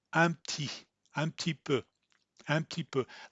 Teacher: you would close your mouth after the un as if you were going to make a P sound, but don't make it. Instead, you just go right to the T sound.